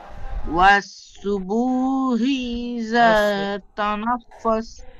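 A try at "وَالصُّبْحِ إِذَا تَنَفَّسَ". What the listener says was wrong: ও সুবু, বার উপর সাকিন আছে, কলকল হবে, সেখানে আপনার বা টান হয়ে যাচ্ছে। ও সুবু বলে বা টান হয়ে যাচ্ছে ও মাদ্দার মতো। ও সুব হি বলেন। আবার বলেন ও সুব, বা কলকলা করবেন।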